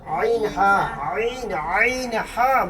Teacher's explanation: হামজা আইন হা কয় নম্বর 2 নম্বর হলকের মধ্যখান হইতে আইন হা বলো হলকের মধ্যখান হইতে